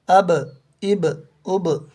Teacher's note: حروف قلقلہ 5 ہیں: قاف، طا، با، جیم، دال، جن کا مجموعہ قطب جد ہے۔ جب ان پر جزم ہو تو ان کو پڑھتے وقت ان کے مخرج ٹکر کھا کر الگ ہو جاتے ہیں